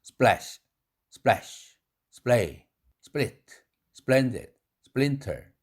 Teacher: 스 다음에 프가 당연히 무기음으로 되죠. 뿌에 가깝죠.